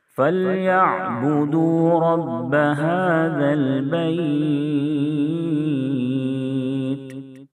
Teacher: ذال کو نہایت نرمی سے پڑھیں، زبان کو اوپر کے سامنے والے دانت پہ لگائیں گے، زبان کی نوک۔